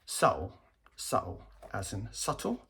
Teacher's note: subtle, as in subtle, with the glottal stop